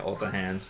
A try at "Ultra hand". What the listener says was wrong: It's Ultra hand, honey, not Ulta hand. No, I heard Ulta.